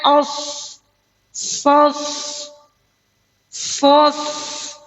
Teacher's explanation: Huruf sod itu bunyi ya, akibat dari hams mengalirnya. Ada desisan.